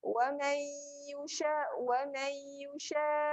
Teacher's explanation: nun tanpa tanda berjumpa dengan ya. Jadi dengung kat sini, dengung ya. Kena masukkan terus bunyi ya.